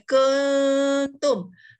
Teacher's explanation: bila nak sebut kun tu jadi hujung lidah kita tak sentuh mana-mana. Kalau kita sentuh dia jadi hukum lain lah. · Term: ikhfa